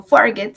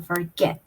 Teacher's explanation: Que la acentuación está al final.